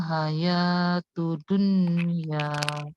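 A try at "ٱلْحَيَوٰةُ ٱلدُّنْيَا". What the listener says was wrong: Dalnya ditekan. Hayatud dunya. Tud, ditahan dulu dalnya. Tudun.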